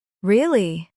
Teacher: But when you say it flat, really, it means you agree or understand.